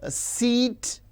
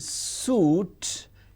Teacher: it is clearly visible evident that e it is front close and O is back close · So we can give a 3-term label to this. E is front close unrounded, whereas U is back close rounded